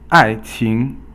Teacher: 爱 is fourth tone and 情 is second tone